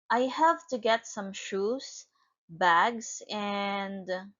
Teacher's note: It is a rising intonation because it has incomplete thought.